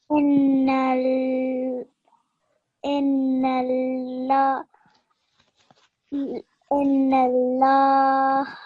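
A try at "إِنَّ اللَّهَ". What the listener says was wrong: Inna Allah. Yeah, I just felt like you needed to put just a tiny bit more time on the shad letters, okay? So when you joined them with the previous letters, you just need to spend a little bit more time joining them, okay?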